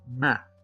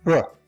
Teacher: That's because in producing the M, the air goes through the nasal cavity. But in producing the B sound, the air goes through the oral cavity. Since the M is produced by the air going through the nasal cavity, we call it a nasal sound.